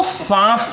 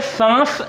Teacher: सांस जब हम बोलते हैं तो नाक और मुंह दोनों लगते हैं, अर्थात हमारा जो वायु जो निकलती है वो नाक और मुंह दोनों से निकलती है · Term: अनुनासिक